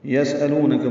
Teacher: سین ساکن پہ ہمس ہے، صفیر کی آواز سے ادا کریں گے.